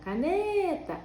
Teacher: No caso da caneta, ó, caneta, a sílaba tônica é o ne